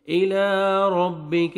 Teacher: الى ربک، را کو عمر فتحہ، را کو موٹا کر کے پڑھیں گے، کاف کو باریک کرنا ہے